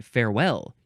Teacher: You emphasize the second syllable.